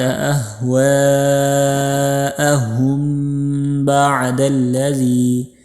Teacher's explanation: کو هُوَ الْهُدَى یہ پڑھنا ہے۔ وَلَئِنِ اتَّبَعْتَ أَهْوَاءَهُمْ بَعْدَ الَّذِي، یہاں میم کے ساتھ با ہے تو یہاں پر اخفائی شفیع یعنی تھوڑی سی دیر لگا کر پڑھیں گے